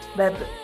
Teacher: ketika huruf ba dalam posisi mati suaranya terdengar mantul.